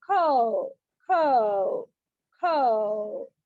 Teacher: in the word cow, the sound glides from A to U, which is called diphthong. Diphthong అనేది ఏంటి అంటే ఒక sound నుండి ఇంకో సౌండ్ కి షిఫ్ట్ అవుతూ ఉంటది. · కవ్ అనే దానిలో ఏ అనే సౌండ్ నుండి యు అనే సౌండ్ కి అది చేంజ్ అవుతూ ఉంది. అంటే చేంజ్ అవడం కాదు, మూవ్ అవుతుంది, గ్లైడ్ అవుతుంది. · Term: డిప్థాంగ్